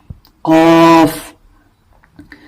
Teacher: زبان کی جڑ سے. جب یہ اقصائی لسان جو کہ زبان کی جڑ ہے یہ اوپر والے تالو سے جا ملتی ہے اور اس سے لگتی ہے تو قاف ادا ہوتا ہے